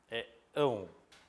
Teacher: órfão termina em ão, que tem um nome técnico para isso. Ele é um ditongo decrescente nasal.